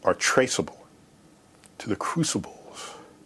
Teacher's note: To the crucibles has such a breathy quality.